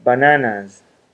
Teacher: the voicing of the a propagates forward into the final s passing along the characteristics of voicing from the a which is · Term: progressive assimilation